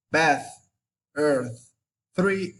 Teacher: the sound it's classified as voiceless, interdental, and fricative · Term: theta sound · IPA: θ